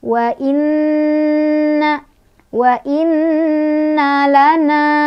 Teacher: Wa inna di sana ada gunnah karena ada nun yang bertasydid. Cara bacanya didengungkan.